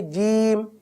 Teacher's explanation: ایک ہے جیم، یہ تو درست ادائیگی ہے، زبان کا درمیان و تالو کا درمیان